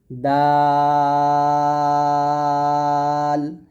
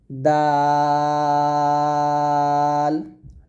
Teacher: জিহ্ববার আগা সামনের উপরের দুই দাঁতের গোড়া